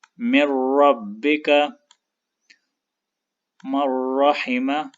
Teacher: اس ادغام پہ غنہ نہیں ہوگا